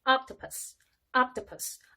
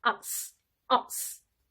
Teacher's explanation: O는 아 소리를 낸다라고 알려주십시오. 실제로 아 소리는 정확히 말하면 우리나라의 O와 아의 중간 정도의 발음이라고 할 수 있는데 우리말과 비교해 보았을 때는 아 소리에 훨씬 더 가깝다고 할 수 있습니다. · 올리브라고 한글로 적는 olive도 아 소리에 가깝게 olive라고 발음하는 것이 훨씬 더 영어스럽습니다